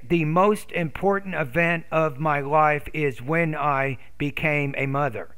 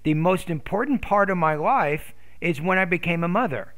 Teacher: part of my life is when i became a mother so there really should only be one pause i would pause right before that dependent clause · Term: thought groups